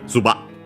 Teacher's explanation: it would be the abrupt end of the vowel, because it's actually technically a glottal stop